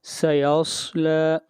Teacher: سین اور صاد میں فرق یہ ہے کہ سین کو موٹا نہیں کرنا اور صاد حروف مستعلیہ میں سے ہے، اس کو ہمیشہ موٹا پڑھا جائے گا